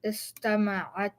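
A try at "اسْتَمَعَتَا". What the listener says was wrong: So now the way you're saying it is istama'atta, like that. You see the shadda here? Get rid of it. Istama'ata.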